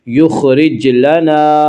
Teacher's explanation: یخرج لنا، را کو باریک پڑھیں گے، را کے نیچے زیر ہے، یخرج لنا، جیم میں قلقلہ ہوگا، جیم حروف قلقلہ میں سے ہے